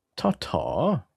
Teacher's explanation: the tongue touching the ridge right behind your teeth. The t sound.